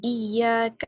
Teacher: کاف کو باریک پڑھنا ہے اور ایک حرکت کے برابر